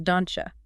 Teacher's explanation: When a word ends in a T or a D sound, and the immediate next word starts with a U or a your, the tongue is forced to move rapidly from the alveolar ridge, that's the hard bump right behind your top teeth, to the roof of your mouth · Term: palatalization